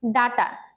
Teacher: ডাটার ড হচ্ছে মূর্ধন্য ব্যঞ্জন, টটাও হচ্ছে মূর্ধন্য ব্যঞ্জন।